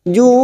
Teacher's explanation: Mat arid li sukun kita panjangkan 4 harokat